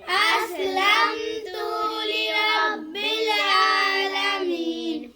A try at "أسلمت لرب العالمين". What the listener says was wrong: تو کو لمبا نہیں کرنا۔ اذ قال له ربه اسلم قال اسلمت لرب العالمین۔